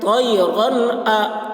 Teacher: تنوین کے بعد حروف حلقی میں سے حمزہ آ رہا ہے، اس لیے تنوین کو ظاہر کر کے بلا غنہ کے جلد پڑھیں گے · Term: اظہار